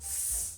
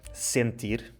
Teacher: o som S sem vibração das cordas vocais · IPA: /s/